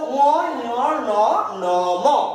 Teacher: না কি সুরে উচ্চারণ হয় মানে নাক ছাড়া উচ্চারণ হবে না। দেখবে আমাদের যদি নাকে সর্দি হয় বা অন্য কিছু হয়, অস্পষ্ট উচ্চারণ হয়, স্পষ্ট উচ্চারণ কিন্তু হবে না তখন। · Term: নাসিক্য ধ্বনি